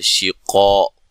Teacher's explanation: شین کو ادا کرتے ہوئے منہ میں آواز بھر جاتی ہے، قاف کو موٹا ادا کرنا ہے، الف مدہ ہے، اور یہاں نون تنوین کا اقلاب مال غنہ ہے۔